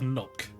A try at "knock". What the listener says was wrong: Sounds like you were saying nook.